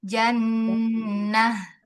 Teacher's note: Ee ta marbutah ee ketika sukun kan dia jadi ha ya. Nah, kita tunaikan sifat H-nya.